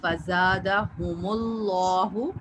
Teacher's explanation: جلالہ سے پہلے اگر پیش ہو آخری حرف کے اوپر اس سے پہلے, تو ہم اس کو پر پڑھتے ہیں, یعنی ہیوی ساؤنڈ سے پڑھیں گے